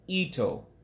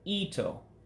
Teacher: i goes up and the o goes down